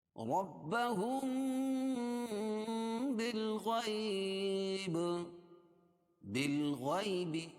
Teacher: یا ساکن سے پہلے زبر ہے اس لیے یا لین، نرم آواز کے ساتھ جلدی پڑھیں گے